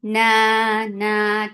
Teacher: Nun will get sifa of gunna. This gunna is akmal, so keep the sound in your nose for a longer time. Nun na 2 counts long.